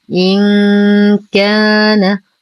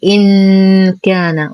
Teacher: لسان حر بين الفكين، والغنة من الخيشوم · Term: إخفاء حقيقي